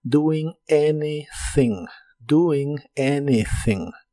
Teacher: la a de anything se pronuncia como e y la th es la th suave de inglés que haces